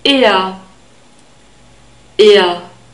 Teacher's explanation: We have a long E sound. E, it's a straight sound, it's not A. E, and we have a central R sound at the end, so slightly more constricted than the normal open R sound.